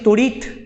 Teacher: আমি উচ্চারণ করছি তড়িৎ, এই যে তটা উচ্চারণ করলাম, খণ্ডিত মানে তটাকে সম্পূর্ণ উচ্চারণ করলাম না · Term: খণ্ডিত ত